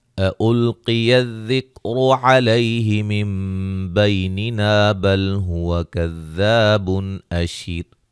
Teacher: حمزہ کو تحقیق سے دونوں کو، ٹھیک ہے، یعنی کہ اس سے مطلب یہ ہے کہ وضاحت کے ساتھ پڑھنا ہے، واضح پڑھنا ہے، نرم نہیں پڑھنا